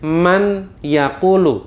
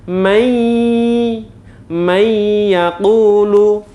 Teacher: bacaan tanwin atau non mati masuk pada huruf ia huruf sesudahnya dan harus didengungkan